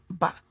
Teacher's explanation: we use the upper lips and the lower lips to pronounce them